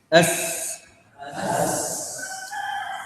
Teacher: من منتهى طرف اللسان مع اسفل الصفحه الداخليه للثنايا السفلى فيخرج الصوت من فوقها مار بين الثنايا العليا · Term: الصفير